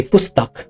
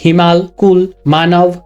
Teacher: Okay, so basically just the consonant sound. There is no attached inherent o sound in it when it's ending. If you say pustak, when writing, the ka at the end has the full ka letter, but when you're saying it out, the ka sound is cut off. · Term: halanta sound, halanta